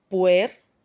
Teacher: la U es una vocal cerrada, ¿no es cierto? Y la E una vocal abierta. Entonces estaré hablando de un caso de diptongo.